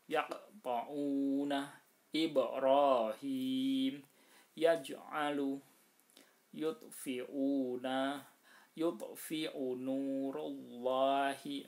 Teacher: qalqalah di tengah kalimat ini namanya qalqalah sughra, harus mantul tapi tidak sebesar qalqalah kubra.